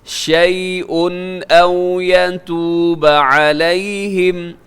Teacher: شیء پہ تنوین کے بعد حمزہ ہے تو اظہار حلقی ہے